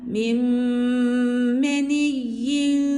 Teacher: Bakın genizden geliyor. Ses burnumdan gelmeli. Çünkü meelunnenin manası budur. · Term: gunne